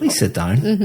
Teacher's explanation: my intonation is going up sounds completely different but the words are exactly the same